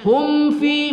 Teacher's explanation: mim sukun bertemu Fa kita baca izhar syafawi kemudian Fi kita baca mad asli Mad thai'i dua Alif eh